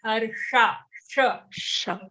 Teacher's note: But in the 15th shloka, the sh which you're talking about, Harsha, it's a retroflex or cerebral sh, or in Hindi we say Murdhanya. So your tongue actually folds back a bit.